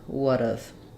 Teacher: So we have a stressed schwa, we have a flap T, and an unstressed schwa. Looks like this, would've.